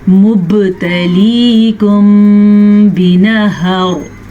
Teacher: अगर यहाँ पे हम वक्फ नहीं करेंगे तो रॉ बारीक पड़ी जाएगी क्योंकि रॉ के नीचे 2 ज़ेर आ जाएंगे। लेकिन अगर हम जीम पे वक्फ करेंगे तो हम यहाँ ठहर जाएंगे।